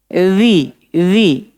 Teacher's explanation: dza itu dia bunyinya seperti itu karena bersentuhan lidah dengan gigi seri bagian atas